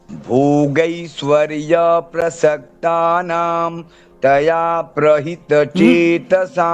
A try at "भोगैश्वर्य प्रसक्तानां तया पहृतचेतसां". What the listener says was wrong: प्रहित नहीं है, तया पहृत। भोगैश्वर्य प्रसक्तानां तया पहृतचेतसां